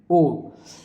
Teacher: ओ से ध्वनि निकल रही है तो हमारा मुख की जो आकृति वो गोल बन रही है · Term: कंठोष्